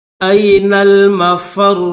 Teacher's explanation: را کے اوپر تشدید بھی ہے، پیش بھی ہے، تو پیش نہیں پڑھیں گے، جزم پڑھیں گے، بس تھوڑی سی جو ہے وہ پیش کی خوشبو دیں گے